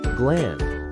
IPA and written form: ɡlænd (gland)